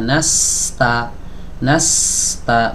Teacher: Jadi sebelum masuk ke huruf ta alirkan dulu huruf sinnya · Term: Sin sukun